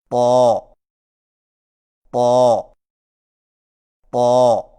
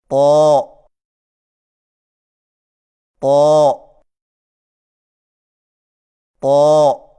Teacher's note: طا کی ادائیگی میں زبان کی نوک کو ثنایا علیہ کی جڑ سے لگا کر اور زبان کے پچھلے حصے کو تالو کی طرف بلند کرتے ہوئے موٹی آواز میں پڑھیں، یعنی طا طا طا۔